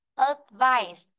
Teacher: Ớ thì nó không có trọng âm. Cứ đọc ra âm ớ là nó không có trọng âm. · Rơi vào chữ phải này này. Chữ ý này cô đọc ra âm ái. Vì vậy nó có trọng âm nên cô mới đọc ra âm ái. · khi chúng ta đọc được advice, trọng âm sẽ rơi vào chữ phải. Còn chữ ớ không có trọng âm.